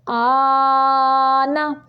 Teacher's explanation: اس کو تقریباً 7-8 حرکات عربیہ جتنا لمبا کرنا ہوتا ہے، کیونکہ کھڑی بھی ہے اور مد بھی ہے. مد کی 5-6 حرکات عربیہ لمبائی ہوتی ہے اور کھڑی کی 2 حرکات عربیہ ہوتی ہیں.